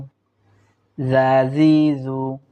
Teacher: একটু হালকা হবে, হালকা করে আমরা পড়ার চেষ্টা করব, অর্থাৎ জিহ্বার আগাটা দাঁতের আগায় নিলেই ইনশাআল্লাহ জালটা হালকাভাবে উচ্চারণ হবে